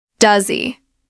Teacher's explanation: Typically, you'll read, "Does he like it?" But the important thing here is that with the pronoun he, the h sound usually disappears in the question